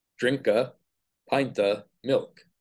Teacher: footing together drink and the reduced form of the indefinite determiner a